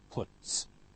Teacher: And finally with put, very simple, t, voiceless, so followed by also voiceless s